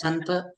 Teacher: स च्या नंतर अच्या नंतर न चं उच्चारण होतं, जे की अनुस्वाराचं उच्चारण आहे.